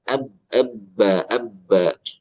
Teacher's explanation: Jangan lupa getaran B-nya tetap jalan.